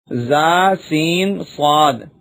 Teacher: زبان کی نوک اور دونوں دانتوں کے اندرونی کنارے سے ادا ہوتے ہیں